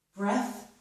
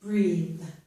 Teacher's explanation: This one is a noun, breath, it's voiceless. With the E as a verb, it's voiced, breathe.